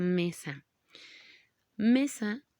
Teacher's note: mesa no tiene su acento en la última sílaba